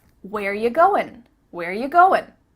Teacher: Where ya? We just changed it to ya. Ya. Not you, but ya.